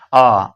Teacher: आ में भी ओट का आकार गोल नहीं हो रहा है। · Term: अवृत्तमुखी